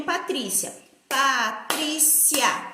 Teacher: o I e o A do Cia ficou juntos. Então, ele é um ditongo.